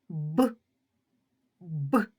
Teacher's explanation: вимовляти важко повітря зустрічає на своєму шляху перешкоду губи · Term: приголосний звук